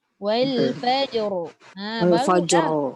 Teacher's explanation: kalau kita waqaf, ra itu jadi tebal. Tafkhim. Mana datang tebal tu?